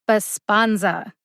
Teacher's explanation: the second syllable spawn gets the emphasis